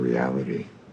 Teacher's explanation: it's not a full duh like a d it's like a it's a flap or a tap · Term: intervocalic t